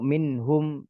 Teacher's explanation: Karena dia nun sukun bertemu dengan huruf izhar, maka gunahnya naqis.